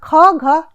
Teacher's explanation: ख घ ये कंठ वर्ग में है, इनका उच्चारण कंठ से हो रहा है